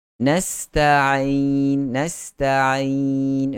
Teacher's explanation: Adapun huruf ain berada pada pertengahan tekak kita.